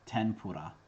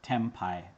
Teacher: It's pronounced differently depending on what kind of sound comes next. When N is followed by a labial consonant, it assimilates to an M.